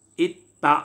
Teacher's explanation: दाल और ता का मखरज एक ही है, ज़बान की नोक ऊपर के दांतों के जड़ से अदा होते हैं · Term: इदगाम